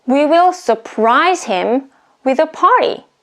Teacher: it's a verb so the stress falls on the second syllable